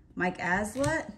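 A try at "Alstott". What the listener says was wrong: Allstott. You're not saying the T at the end. Allstott.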